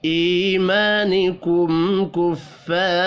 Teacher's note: میم ساکن کے بعد کاف ہے، اظہار شفی ہوگا، غنہ نہیں ہوگا